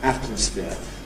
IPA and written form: ˈætməsfɪə (atmosphere)